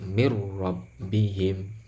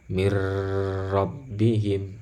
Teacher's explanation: Nah, yang harus dicatat juga adalah ini tanpa gunnah. Bila gunnah berarti tidak boleh berdengung. Berarti kalau membaca ini tidak boleh begini, misalkan mir rabbihim. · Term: idgham bila gunnah